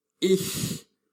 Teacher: The first of the pronunciations of this letter combination is called soft CH, which is made by placing the tongue between the upper molar teeth, like in the word ich, which means I.